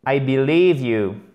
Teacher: accent tonique ici, là, sur la deuxième syllabe